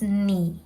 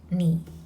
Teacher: So this is the lowest note in the four tones. Yeah, the third tone.